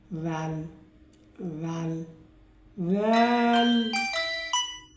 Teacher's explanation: জিহ্বার আগা সামনের উপরের দুই দাঁতের আগার সাথে লাগিয়ে জাল উচ্চারিত হয়।